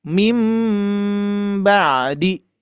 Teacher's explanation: intibaq itu adalah menempelkan dua dua bibir ya. Menempelkan dua bibir.